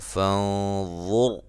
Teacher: فانظر نون ساکن کا موٹا اخفا ہے